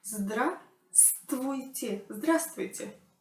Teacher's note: We say здравствуйте without that v. There is no v there.